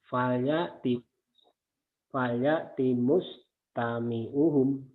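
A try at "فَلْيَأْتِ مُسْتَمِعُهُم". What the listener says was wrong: Sudah bagus tapi jangan cepat-cepat. Fal fal ya timus tami uhum. Jangan cepat-cepat.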